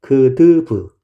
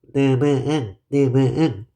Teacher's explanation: 코에서 나는 소리니까 코를 막으면 소리가 달라지죠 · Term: 비음